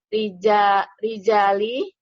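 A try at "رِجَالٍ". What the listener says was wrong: Lin. Bertanwin kan tidak.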